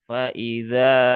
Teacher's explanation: Alif setelah fathah maka dia dibaca panjang dua harokat.